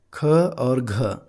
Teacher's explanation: ख और घ इसका जब हम उच्चारण करते हैं तो ज्यादा हवा मुंह से निकलते हैं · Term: महाप्राण